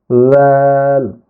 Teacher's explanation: রাল উচ্চারণ করার সময় জিহ্বার আগা সামনের উপরে দুই দাঁতের আগার সঙ্গে লাগবে